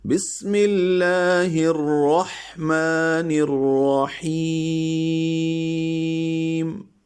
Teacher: ہا وسط حلق سے نکالنا ہے دونوں جگہ · آخر میں بالکل ہونٹ بند ہو